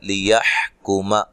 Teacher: حا کو واضح نکالنا ہے، کاف کو باریک پڑھنا ہے